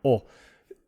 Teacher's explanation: you take the ah, like in father, and you round your lips a lot, and it's really deep and low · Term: very rounded oh